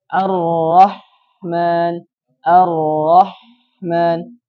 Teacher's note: huruf ha sama pengucapannya harus samar mengalir dan banyak udara yang keluar baik pengucapannya seperti ini Arrahman Arrahman Wah banyak udara yang mengalir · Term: sifat Hames